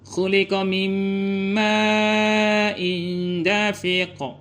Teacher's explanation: nunnya dileburkan kepada huruf mim. Jadi nunnya nggak dibaca lagi karena dia melebur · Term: idgham bi gunnah